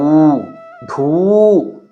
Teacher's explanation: ಜಿ ನೋಡಿ ದೀರ್ಘ ಅಕ್ಷರವಿದೆ ಠ ಉ ಥು ಡ [ಗಂಟಲು ಸರಿಮಾಡಿಕೊಳ್ಳುವಿಕೆ] ಊ ಧೂ ಎಂದು ಮಹಾಪ್ರಾಣವನ್ನು ದೀರ್ಘಾಕ್ಷರವನ್ನು ಉಚ್ಚರಿಸಬೇಕು